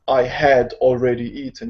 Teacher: when you're speaking fluently and you speak as a native and you speak fast, you don't say the H in had.